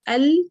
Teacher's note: लेकिन चूंकि ये मखरज से रिलेटेड आपकी एक डिफिकल्टी है, तो मैं फिर भी यहाँ पे शॉर्टली आपको कुछ ना कुछ बता देती हूँ कि अगर आप एल कहेंगी तो वो गम रिज के फ्रंट साइड पर आपकी जुबान टच की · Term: लाम